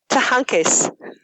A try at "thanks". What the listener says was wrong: There was an epenthetic schwa in there. I don't think your pronunciation's very good.